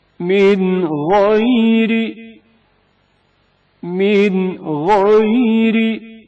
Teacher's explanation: غین سے پہلے نون ساکن کا اظہار